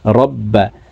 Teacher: প্রিয় দর্শক, বার উপরে তাসদিদ আছে, তো তাসদিদওয়ালা হরফ দুইবার উচ্চারণ করিয়া পড়িতে হয়, একবার পূর্বের হরকতের সঙ্গে আরেকবার নিজ হরকতের উচ্চারণ হবে।